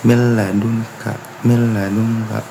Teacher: Kemudian ada idgham bilahunna apabila nun atau tanwin bertemu huruf lam ro, yaitu di cara bacanya huruf nunnya dimasukkan ke huruf lam ro namun tidak berdengung